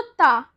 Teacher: आपकी जीभ है वो आपके दांतों को टच कर रही है